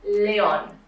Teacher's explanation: we have two strong vowels a and o next to each other but in different syllables